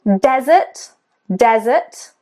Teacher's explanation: the stress is on the first syllable. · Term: syllable stress